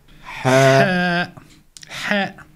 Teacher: c'est une lettre qui est au milieu de la gorge